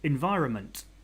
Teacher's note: the trick is just the N is kind of silent. And it's silent regardless of your accent, I think.